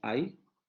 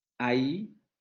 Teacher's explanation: su aparato fonador va a desplazar el momento articulatorio de la primer vocal a la otra vocal sin una interrupción de ese desplazamiento · ustedes generan una interrupción entre esas dos vocales. Es lo que conocemos como un hiato.